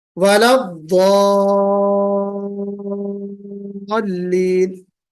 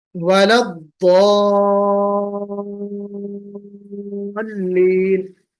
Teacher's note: 6 انگلی کھولنے میں جتنی دیر لگتی ہے اتنی ہی دیر آپ کو مد لازم کھینچنے میں لگنی چاہیے